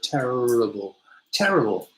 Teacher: in british english we don't go we don't go in the throat it's just kind of in the middle of the mouth